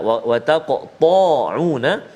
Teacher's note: qaf ada qalqalah dan tebal kat situ, huruf isti'la, ta huruf isti'la, wa taqta'una.